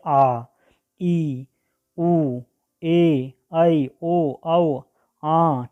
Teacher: दीर्घ स्वर में इसके उच्चारण में ह्रस्व स्वर से अधिक समय लगता है, 2 मात्रा का समय लगता है।